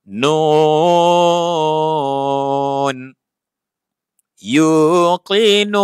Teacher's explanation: Nun baris depan tambah wau baris mati tambah nun baris atas nuna. Ketika berhenti huruf terakhir dimatikan dan dibaca panjang empat harakat. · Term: mad arid l sukun